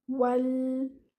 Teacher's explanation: your lam still here should be light and it should be given moderate time. Don't bounce your lam, not wala. Wal hayata.